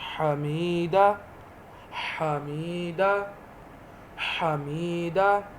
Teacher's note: ہا حلق کے قریب نرم آواز سے